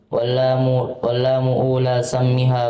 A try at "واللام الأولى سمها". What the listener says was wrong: واللام الأولى. واللام الأولى. Salah penempatan itu dhammahnya. Karena dhammahnya di sini wallahu taala alam diletakkan di lamnya, harusnya diletakkan di alifnya. Jadi cara bacanya wallamal ula.